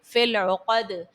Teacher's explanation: قوف حرف مستعلیہ کا ہے تو یہاں پر آپ نے اس کو پر پڑھنا ہے، دال بھی حرف قلقلہ کا ہے اور اس کو ساکن کرنے کی صورت میں آپ یہاں پر دال کو خوب ظاہر کرو گے۔